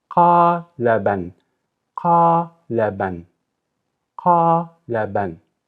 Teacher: That's a long qa. La, that's a short la. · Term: long vowel